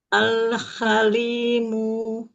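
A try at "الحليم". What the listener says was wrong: Nah, lebarin lagi makhraj lamnya, lidahnya lebarin lagi. Al-halimu. Ya, tahan lagi lam sukunnya. Al-hamimu.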